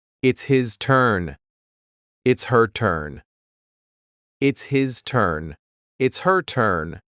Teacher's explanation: The H at the beginning of his and her is cut off.